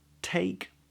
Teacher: tip of the tongue comes up again for the next T take and we get this wide diphthong